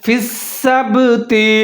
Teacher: تو یہاں پر میں نے اخفا کیا ہے، مِنْكُمْ فِي السَّبْتِ، سین کو مضبوطی کے ساتھ پڑھنا ہے کیونکہ اس کے اوپر مشدد ہے ، فا کے ساتھ ملا کے پڑھنا ہے، فِي السَّبْتِ، آگے